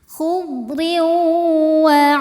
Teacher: ada idgham bighunnah karena ada tanwin kasrah menghadapi huruf waw. Cara bacanya masuk dan berdengung. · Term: idgham bi gunnah